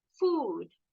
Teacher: Kalau yang o-nya dua bunyinya u panjang